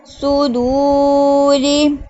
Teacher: سواد حروف مستعلیہ میں سے آ رہا ہے، اس کو پورا پڑھیں گے. واو سیکنڈ سے پہلے پیش ہے تو واو مدہ ہوگا.